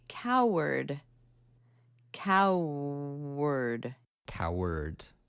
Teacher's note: there's extra cow herd right cow herd but cow word so you kind of bring that W over to the R sound